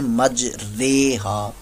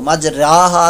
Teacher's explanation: زبر کو الف کو یا کی طرف مائل کرنا, تو مج راہا تھا تو اس کو مج رے, الف مدہ تھا یہاں پر تو اس کو مائل کر دیا گیا, رے بنا دیا گیا, مج ریہا. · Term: امالہ